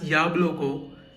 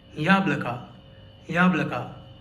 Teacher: The other vowels are unstressed. So in this word we have ya as stressed and the two other vowels the two o's are unstressed. That's why they read as uh and not o. So we do not read this word as yablo.